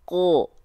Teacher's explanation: Dia nggak dibaca ka, tapi ko. Keluar dengan vokal o. Kenapa? Karena huruf-huruf yang ketika berharokat baris atas atau fathah dibaca dengan vokal o karena mereka adalah huruf-huruf yang tebal.